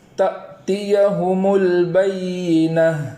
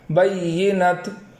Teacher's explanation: تو جب ہم وقف کریں وہاں تو اس بات کا خیال رکھیں کہ اس تا کو ہائے ساکنہ سے بدل کر پڑھیں